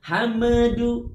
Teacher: Pastikan bibir kita tetap rapat sehingga huruf du-nya kita sebutkan. Kalau bibir kita lepas sebelum du-nya keluar, hame, maka yang terjadi akan ada suara memantul. Hamadu. Oleh sebab itu cara yang paling efektif adalah tahan posisi bibir kita, mengeluarkan suara huruf dan melepasnya bersama dengan bunyi huruf dal atau bunyi du.